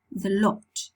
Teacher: Then for the thought, the back of the tongue will go up to this position. Then for the lot, the back of the tongue won't go high. It's low